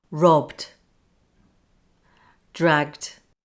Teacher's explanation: there is no explosion for the first sound only a gentle explosion for the DU